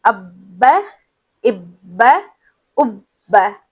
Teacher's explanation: जब हम बा पढ़ रहे हैं तो होठ पूरी तरह मिल रहे हैं। फिर खुल रहे हैं।